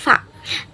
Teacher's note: labiodental, itu dari bibir bawah dan gigi atas. Bibir bawah dan gigi atas, yaitu huruf fa.